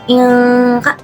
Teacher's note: Nah, nun sukun apabila bertemu dengan huruf kaf termasuk hukum ikfa hakiki. Cara membacanya adalah dengan cara sama-sama disertai dengungan selama dua harakat. Jadi bacaan inka dibaca dengan dengungnya. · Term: ikhfa hakiki